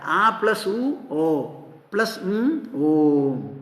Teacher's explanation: ഈ ശബ്ദം ഉണ്ടാകുന്നത് കേട്ടാൽ ഒരു ശബ്ദമാ എന്നാൽ ഒരു ശബ്ദമാണോ അത് അല്ല ഒരു സിലബിൾ അല്ല അതിൽ മൂന്നെണ്ണം ഉണ്ട് അകാരം ഉകാരം ഉംകാരം ആദ്യത്തേത് വായ തുറന്നാൽ വരുന്ന ആ അവസാനം വായ അടച്ചാൽ വരുന്നതും പിന്നെ മധ്യത്തിൽ